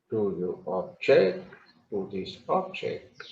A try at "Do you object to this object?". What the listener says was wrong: Better. Better.